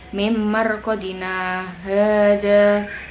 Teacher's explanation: hukum bacaan saktah karena Berhenti sejenak tanpa mengambil nafas